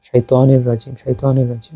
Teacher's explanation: তানবিনের পরে আসছে ইদগামে বেলাগুন্না অর্থাৎ গুনা ছাড়া